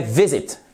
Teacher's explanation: l'accent tonique sur la première syllabe. C'est pas visit, c'est pas visit, mais c'est visit, justement.